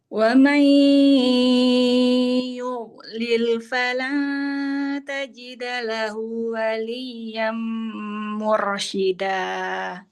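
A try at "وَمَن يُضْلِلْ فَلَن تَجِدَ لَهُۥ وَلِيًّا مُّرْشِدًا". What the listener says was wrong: Lahunya kurang 2 harokat. Tajidalahu waliya. Tajidalahu waliyam mursyida.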